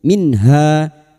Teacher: nun sukun bertemu ha idhar halqi nun sukun dibaca jelas tanpa mendengung